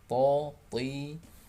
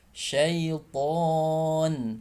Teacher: tapi huruf to dia tidak boleh keluar nafas